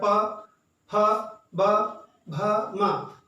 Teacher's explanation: आप देखिए इनको बोलते समय प, फ, ब, भ, म क्या हो रहा है, हमारे ऊपर और नीचे के दोनों होंठ एक दूसरे को छू रहे हैं, एक दूसरे में मिल जा रहे हैं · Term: ओष्ठ व्यंजन